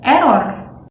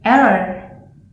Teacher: Indonesians pronounce R cleanly with the short tongue vibration and with only the slightest hint of the W sound